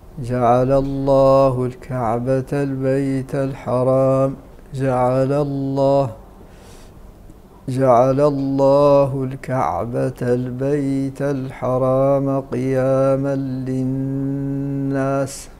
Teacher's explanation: اسم الجلالة الله أيضا وقع قبله فتح والحكم التغليظ